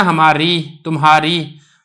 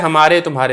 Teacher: اور اسی طریقے سے یہ جو بڑی یہ ہے یہ بھی مجہول یہ ہوتی ہے، کیونکہ جو یا ہوتی ہے نا وہ اصل میں تو یہ والی یا ہوتی ہے، جیسے نا ہماری، تمہاری، وہ اصل یا یہ والی ہے، لیکن یہ والی جو یا ہوتی ہے جس کو بڑی یہ کہتے ہیں یہ مجہول یا ادا ہوتی ہے، تو اس طریقے سے اس کو پڑھا جاتا ہے ہمارے، تمہارے۔